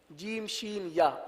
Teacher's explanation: جیم شین یا، یہ 3 حرف ایک ہی جگہ سے ادا ہوتے ہیں